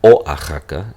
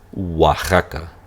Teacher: the O is actually, it sounds like a glide. It's going to sound as a wa. So nobody says Oaxaca, it's Oaxaca.